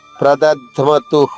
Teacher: చివరిగా ఉన్న విసర్గ ఇక్కడ హాలా కాదు హు అని పలకాలి. ప్రదధ్మతు. విసర్గకు ముందు అకారం ఉంటే హ, ఉకారం ఉంటే హు, ఇకారం ఉంటే హే, ఉకారం ఉంటే హో.